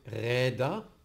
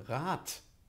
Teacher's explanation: Aber die Auslautverhärtung von Rad ist eine Neutralisation. Hier wird die Stimmhaftigkeit zur Stimmlosigkeit verändert